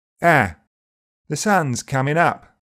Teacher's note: In Essex and Cockney, it's more open and to the front. "Ah." The sun's coming up.